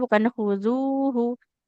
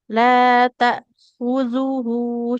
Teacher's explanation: Yang panjang bukan zalnya tapi haknya